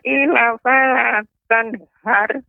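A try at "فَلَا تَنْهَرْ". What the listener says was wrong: Ya, ini roknya masih tipis Nek. Jadi har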